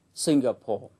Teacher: danh từ Singapore trọng âm rơi vào âm tiết thứ nhất